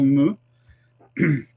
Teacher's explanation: C'est un son qui est nasal. Et donc, pour qu'un son soit nasal, il faut que l'air passe par le nez.